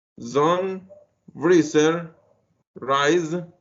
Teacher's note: in these sounds, the sound z, your vocal cords should vibrate. For that reason, this sound is voice. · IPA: /z/